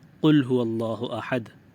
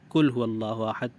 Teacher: قاف موٹا پڑھا جاتا ہے، کاف باریک پڑھا جاتا ہے۔